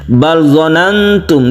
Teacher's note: kita membaca lam ini jangan dikolkolahkan. Ketika kita membaca sukun lam, kita harus membaca secara tawassut atau tengah-tengah, tidak terlalu ditekan dan tidak terlalu dilepas, karena dia itu mempunyai sifat tawassut atau tengah-tengah.